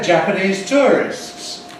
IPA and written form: ˌʤæpəniːz ˈtʊərɪsts (Japanese tourists)